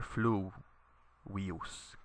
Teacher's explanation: you put the accent on the u here, fluvius, because the I here is short.